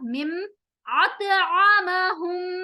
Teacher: simply याद रख लें, यहाँ पर मीम साकिन और मीम आ रहा है तो हम यहाँ पर मिला रहे हैं, तो मीम और मीम को मिलाते हुए गुन्ना होगा